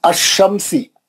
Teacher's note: اس میں لام نہیں پڑھ جاتا، یہ لام گر جاتا. آپ دیکھیے لام نہیں پڑھ جا رہا.